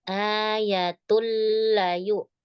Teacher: Iya-nya enggak panjang, A-nya yang panjang.